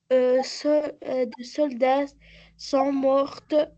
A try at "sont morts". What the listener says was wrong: Sont morts, morts. C'est pas morte, sont morts.